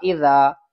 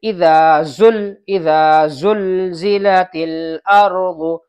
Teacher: زال نکلے گی، زبان کو باہر نکالیں گے تھوڑی سی، اوپر کی جو سامنے کے 2 دانت ہیں وہاں پر زبان کو لگائیں گے جب ہوگا اذا۔ اور زا جو ہے وہ زبان کی نوک اوپر کے تلوے پہ لگے گی